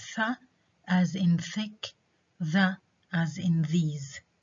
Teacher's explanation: made by an articulation between the tongue and the teeth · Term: dental sounds